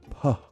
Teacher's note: a voiceless bilabial affricate, which I can best describe as making an airy P-like sound, like a puh sort of sound.